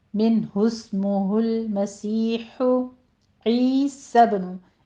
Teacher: सब में कलकला करेंगे बा के ऊपर